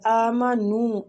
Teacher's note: حمزہ پہ بھی کھڑی زبر ہے تو اس کو بھی 2 حرکات کھینچیں گے